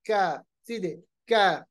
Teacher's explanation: कैफ अदा करते वक्त हमारा जो मुंह है वो गोल नहीं होता है, कैफ सीधे, कैफ। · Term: किताब वाला कैफ